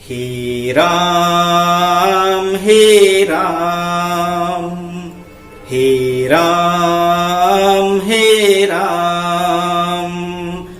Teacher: अधिक समय लग रहा है, दीर्घ से भी अधिक समय लग रहा है, तो इसमें 3 मात्रा होती है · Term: प्लुत